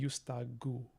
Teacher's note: I guess it should be yustagu if we are voicing intervocalically.